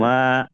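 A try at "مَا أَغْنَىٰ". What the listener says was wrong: মা তিন আলিফ টান দেন, মা।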